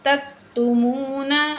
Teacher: تا کو کاف سے ملائیں گے، کاف باریک ہے، اس کو موٹا نہیں کریں گے. تا زبر کاف تک، تا پیش تو، میم پیش واو مو نون زبرنا تکتمون.